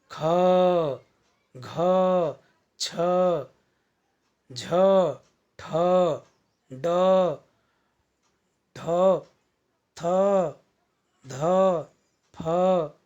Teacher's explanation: जिन व्यंजनों के उच्चारण में वायु की मात्रा अधिक होती है और अधिक गति से निकलती है, वेग से निकलती है, उन्हें हम महाप्राण कहेंगे।